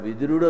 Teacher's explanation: ఇక్కడ వాడు విదురుడు అన్నప్పుడు దకారం అల్పప్రాణం, ఇది మహాప్రాణం విదురుడు.